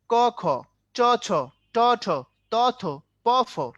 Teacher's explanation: প্রথমটাতে বাতাস কম, পরেরটাতে বাতাস বেশি। এর মানে প্রথমটা হলো তোমার অল্প প্রাণ, পরেরটা হলো তোমার মহাপ্রাণ